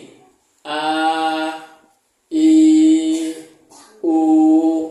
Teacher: Alif ya wau ketika Mad bunyi ini a i u panjangnya itu a i u itu dari rongga mulut kita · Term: huruf-huruf mad